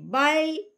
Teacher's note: जो हमारे ऊपर वाले मोटे मसूड़े हैं उस पे लगती है। तो जब हम बल कहेंगे तो जबान को हम मोटे मसूड़ों पर टिका देंगे।